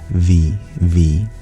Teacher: It's not actually a labiodental sound like we say in English V, where we press our bottom lip to our top teeth.